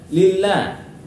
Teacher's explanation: Jadi dibaca tarkik. Lamnya dibaca tarkik karena jatuh setelah harokat fathah.